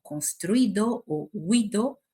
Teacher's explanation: participios como construido o huido no contienen un iato y sí contienen un diptongo, vocales que no se separan